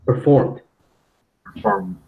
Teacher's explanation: you do not want to emphasize pronouncing the ed at the end. You want to make that into a T sound a little bit.